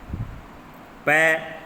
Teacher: पै बोलोगे तो होठ चिपकेंगे, बिना होठों को चिपकाए पै नहीं बोल सकते आप